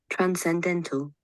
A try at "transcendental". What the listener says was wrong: Yeah, N is not silent. That's another word. That's another word. I've heard the word you are saying. Here the N is not silent.